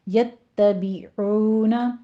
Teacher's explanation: عین وسط حلق سے ادا کرنا ہے اور آگے واو مدہ ہے